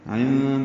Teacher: بعین وسط حلق سے ادا ہوگا، نون ساکن کے بعد دال آنے کی وجہ سے اخفا ہے، نون کی آواز چھپائیں گے.